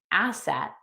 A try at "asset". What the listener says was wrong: Nope. Asset. You were saying acid.